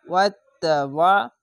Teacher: আইনটিকে মোটা করে গলা চিপে পড়বেন